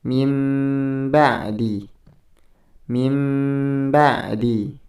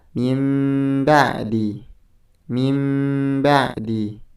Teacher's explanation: ketika nun sukun bertemu dengan huruf ba dibacanya diganti menjadi huruf mim nah nun sukun tersebut diganti menjadi huruf Mim Hai maka dari